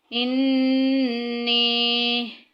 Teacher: نون مشدد آ گیا، غنہ کریں گے، ناک میں آواز لے کے جائیں گے